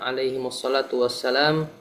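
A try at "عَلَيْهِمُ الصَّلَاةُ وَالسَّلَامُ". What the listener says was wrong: Alaihimussalatu wassalamu dibaca lengkap.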